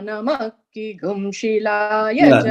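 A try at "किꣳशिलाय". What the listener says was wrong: Nama Kegum. You should not bring that down.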